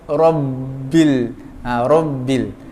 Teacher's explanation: Ra tu tebal tau. Sebab ra tu baris atas. Jangan ra. Jangan ra.